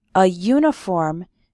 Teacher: the sound not the letter of the next word for example we say a uniform because uniform starts with a yu sound